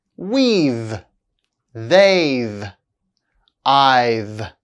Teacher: The contraction of have is pronounced v after a vowel sound.